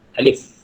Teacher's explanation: ada bunyi angin sikit kat belakang